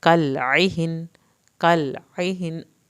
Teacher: کالعہن عین حلق سے پڑھیں گے، ہا اور نون کو نہیں ہلانا